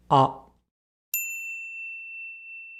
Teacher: the tongue position is slightly more forward than the vowel found in father